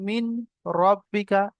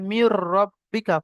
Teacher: নুন সাকিন কে বিনা গুন্নায় মিলিয়ে তাড়াতাড়ি পড়তে হবে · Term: ইদগামে বেলাগুন্না